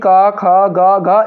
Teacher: कंठ से ही क ख ग घ इन सभी वर्णों का उच्चारण किया जाता है